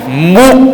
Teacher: Okey, wa yubashshiral mu'mininal. Okey, mu'mini ni kita tekankan pada pangkal kerongkong lah, huruf hamzah.